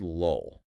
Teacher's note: The first L is a light L. You pronounce it at the front of your mouth, right behind your teeth. Right. But that final L is a dark L.